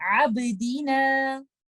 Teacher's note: Letter ब लफ्ज के दरमियान में है तो इस पे हम कलकला करेंगे और कुछ इस तरह से पढ़ेंगे आबदीना।